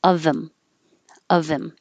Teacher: you can get rid of the H